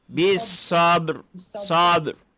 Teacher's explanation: Cuma lantunnya dia tidak dilantunkan sangat sebab masuk kepada ra yang separuh harakat. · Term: qalqalah sughra